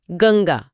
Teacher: અહીં ગમ પર સ્પષ્ટ સ્પષ્ટ અને તીવ્ર ભાર છે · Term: તીવ્ર અનુસ્વાર